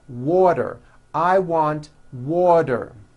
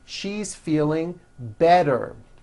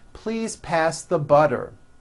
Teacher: if a letter T falls between 2 vowel sounds, which are voiced, so if it falls in the middle of vowels, then the T is pronounced as a D and the whole word is voiced.